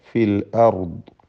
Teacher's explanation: ഫിൽ അർദ് പറയുമ്പോൾ റാഉം ദ്വാദും ഈ രണ്ടക്ഷരങ്ങളും തഫ്ഖീം ചെയ്യേണ്ട അക്ഷരമാണ്.